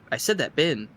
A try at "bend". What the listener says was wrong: You're saying it weird. You're saying it without the D, so it sounds like you're saying bun. As in trash can.